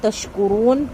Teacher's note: کاف باریک، شین باریک، تا باریک، را پر، اور نون کے اوپر جب ہم وقف کریں گے تو ہم یہاں پہ مد عارض کا قاعدہ کریں گے۔